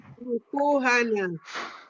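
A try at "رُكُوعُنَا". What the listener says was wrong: you say ruku'ana. In that case, you want to say ruku'una, our prostration.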